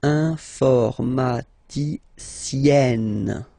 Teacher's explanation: Remember, E and then double N, or then it could be double L or double consonant here. You open your E, so it's E, informaticienne.